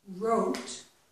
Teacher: We Don't pronounce this W so it's as if it's starting with the r